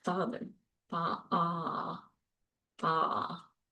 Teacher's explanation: The next vowel is ah, like in father, fa, ah, fa. It's a low back tense vowel as well.